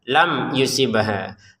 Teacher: Kemudian mim sukun bertemu ya dibaca dengan jelas. Ini kalau ini masukin tanpa dengungan.